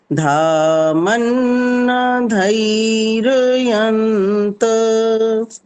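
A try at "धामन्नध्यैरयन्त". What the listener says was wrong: Last में फिर गलत हो गया, मन्नध्यय है ये, ध आधा और य में दो मात्रा है। ध्ययी, मन्नध्यय है ये, ध आधा है,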